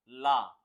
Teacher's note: जब आप ला का उच्चारण करोगे तो जीव क्या होगी आगे से ऊपर लग जाएगी जुड़ जाएगी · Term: पार्श्विक व्यंजन